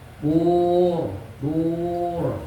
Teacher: bur dur itu tafkhim mufakham maka bibirnya maju